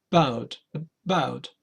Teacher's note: So we are going to stress the second syllable of about, and this a is now is not similar to the Spanish one. · If we talk about single words like here on your right, we could talk about this vowel here, the schwa. This is the most common vowel in English, which is unstressed.